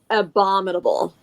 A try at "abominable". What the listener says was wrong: There's no D in it. Abominable. A, bomb in able. Not abdominal.